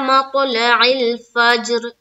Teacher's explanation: اب اس را کو ہمیں ساکن بنائیں گے, کیونکہ را کے نیچے زیر ہے اور جب رکنا ہے تو اس پر سکون لائیں گے. تو اب اس را کو بھی ہم پر کریں گے, کیوں, کیونکہ فا کے اوپر کیا ہے, زبر ہے